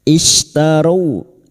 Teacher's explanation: istaru syin sukun wastul lisan atau tengah lidah